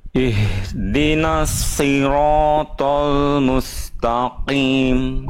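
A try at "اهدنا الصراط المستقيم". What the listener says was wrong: Jangan jadi pendek kimnya. Kimnya panjang.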